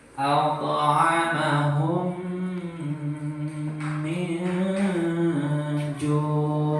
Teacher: Dia mim sukun bertemu dengan mim tadi ya. Itu mimi harus ditahan 2 harokat minimal dan didengungkan